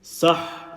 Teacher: letter ha with a sukoon and letter ha with a fatha. They have both been sandwiched and merged together, and there is a continuation in the sound. So we've got Sin with a fatha and a ha with a shadda.